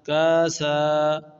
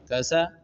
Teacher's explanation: میں نے کاف کو بھی لمبا کیا، سین کو بھی لمبا کیا ، جبکہ کاف کے اوپر بھی زبر ہے اور سین کے